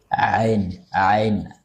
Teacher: huruf ainnya sudah sangat berusaha ya untuk tidak masuk ke hidung